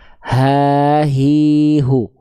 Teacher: ha besar itu dilafalkan dari bagian pangkal tenggorokan